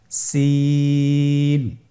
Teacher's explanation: সিনের মাখরাজ, সিন কোন জায়গা থেকে উচ্চারিত হয় ছবিতে দেখতে পাচ্ছেন। জিহ্বার আগা সামনের নিচের দুই দাঁতের প্যাড ও আগার সঙ্গে লাগিয়ে উচ্চারিত হয়।